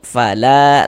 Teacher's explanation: La dibaca panjang. Ini namanya adalah mad jaiz munfasil. Namun pada awalnya namanya mad thabi'i.